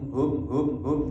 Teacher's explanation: setiap mati walaupun izhar jangan dihilangkan dengunnya sama sekali